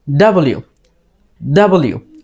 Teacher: এখানে যে একটা মার্ক দেখতে পাচ্ছ এটাকে বলা হচ্ছে প্রাইমারি স্ট্রেস যখন আমরা ডাব্লিউ বলবো এখানে ডিতে একটা স্ট্রেস দিতে হবে